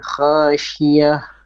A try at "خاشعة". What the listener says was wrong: عين. خا heavy. Make it more heavy, more full mouth.